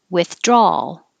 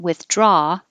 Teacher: you're making an ah draw and then your tongue goes up for the l